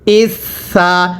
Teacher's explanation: এই সাটা নরম করে পড়তে হবে। সাটা উচ্চারণের সময় জিহ্বাটাকে দাঁতের আগার সাথে লাগিয়ে নরম করে পড়বেন। পড়ুন হামজা সাজের ইস, সা জবর সা, ইসা।